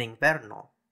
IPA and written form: iŋvɛɾno (invèrno)